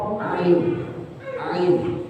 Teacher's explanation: Ain itu di pangkal tenggorokan. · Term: huruf ain